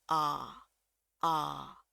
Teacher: Saya nyebutnya sebagai atbal biar gampang. Jadi mulutnya kebuka lebar, rahangnya kebuka lebar. Ee antara mengucapkan a dengan O tapi cenderung ke A.